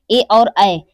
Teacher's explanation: ए और ऐ हमारा जो है वो कंठ और तालु दोनों से मिलकर उच्चारित होता है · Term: कंठ तालव्य